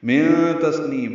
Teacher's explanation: من تسنیم نون ساکن کے بعد تا آنے کی وجہ سے اخفا ہے. سین ساکن پہ ہمس ہے. نون کو لمبا کریں گے. · ہو الٹا پیش مد صلہ دو حرکات لمبا کریں گے. من تسنیم نون ساکن کے بعد تا آنے کی وجہ سے اخفا ہے